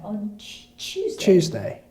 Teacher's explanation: the T sound is more like the CH and T between those, those two sounds.